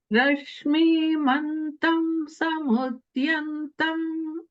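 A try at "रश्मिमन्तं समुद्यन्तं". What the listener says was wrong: Only thing is the E sound in Rashmi is hrasva. You were saying it a little bit like a dirgha, but it's hrasva. So it's like Rashmi mantam. Rashmi mantam.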